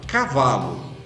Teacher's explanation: Então a sílaba tônica é o Vá, é a penúltima